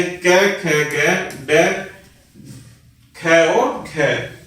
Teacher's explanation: Next होता है कोमल तालव्य। इन व्यंजनों को बोलते समय जीभ तालु के सबसे पिछले भाग का स्पर्श करती है।